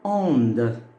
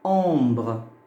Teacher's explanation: La troisième voyelle nasale, c'est le O, mi-ouvert avec tilde.